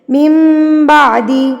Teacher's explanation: اگر نون ساکن کے بعد با آ جائے تو آپ نے نون ساکن کی اور تنوین کی آواز کو میم میں تبدیل کر دینا ہے. اوپر سے آپ کو چھوٹی سی میم بنی ہوئی مل بھی جائے گی. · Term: اقلاب